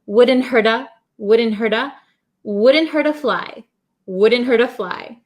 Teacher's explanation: the T becomes a flap T so it sounds like a soft D sound